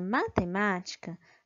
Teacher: Na palavra matemática, a sílaba mais forte é a sílaba ma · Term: sílaba tônica